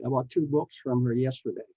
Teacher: book has a k n Sound which is a voiceless sound so the sound of the S is s not Z